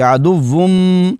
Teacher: نون کی جو آواز ہے وہ میم سے بدل جائے گی، عدوون سے عدوم میم کی آواز آئے گی، عدوم اس طرح پڑھیں گے۔